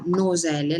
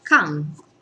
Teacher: Quando dico la parola noselle, la punta della lingua la se sui denti, infatti la si chiama dentale, che è diversa dalla N che faccio quando dico la parola can, no? Dove la lingua, il dorso della lingua è sul palato, e infatti la si chiama N velare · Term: N dentale